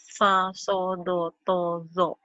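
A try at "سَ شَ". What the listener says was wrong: Bagus, tinggal shin-nya aja nih. Abatasa jahakho da'zaroza da'zaroza da'zaroza sa-sya. Ini SY. Sa-sya.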